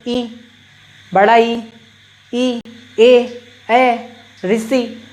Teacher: अग्रभाग से निकल रहे हैं, यानी सामने से निकल रहे हैं